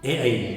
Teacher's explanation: ए और ऐ का उच्चारण स्थान कंठ तालव्य होता है। कंठ और तालु मिलकर के ए ऐ का उच्चारण करते हैं, संयुक्त स्पर्श है कंठ और तालु का, ए ऐ।